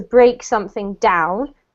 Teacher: if you're using the verb to break something down then you can put the emphasis on the down